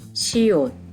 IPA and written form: ʃiot (siot)